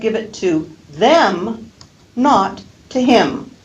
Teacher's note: I'm emphasizing those two pronouns, and therefore I can use a full vowel quality.